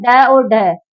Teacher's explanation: हमारी जीवा पलट के एकदम से नीचे गिरती है और तालू के ऊपर के स्थान को मूर्धन्य बोलते हैं